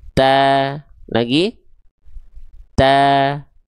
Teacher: Ta te ta. Pangkal lidahnya di bawah. Rongga mulutnya terbuka sehingga vokal A-nya bebas keluar dengan tipis. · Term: huruf ta